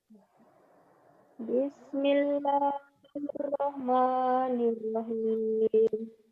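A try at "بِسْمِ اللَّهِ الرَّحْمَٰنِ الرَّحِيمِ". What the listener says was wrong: Bismillahirrahmanirrahim. Kamu kurang lagunya ya. Jadi kalau ada guna, ya ada guna, ada mad, kamu bermain. Bismillahirrahmanirrahim.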